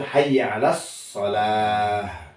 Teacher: keluar H itu keluarnya dari aqsal halqi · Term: H besar